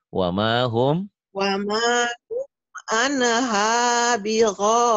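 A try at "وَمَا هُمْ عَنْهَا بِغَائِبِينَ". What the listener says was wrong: Pintar. Tapi annya jangan ane ya, jangan.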